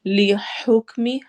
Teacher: ہا میں حروف حلقی آ رہا ہے تو ہم ہا کی آواز کو نکالیں گے حلق کے درمیان سے